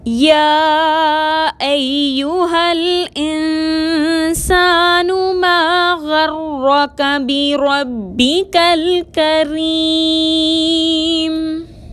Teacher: یا مشدد کو مضبوطی اور دباؤ کے ساتھ ادا کریں گے، یا میں سیٹی کی صفت لانا درست نہیں